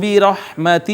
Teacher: را مفتوح تھی اس وجہ سے اس کو پر کر کے پڑھا